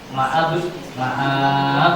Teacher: qalqalah ditekan dipantulkan cepat. Maab maab itu qalqalahnya harus keluar.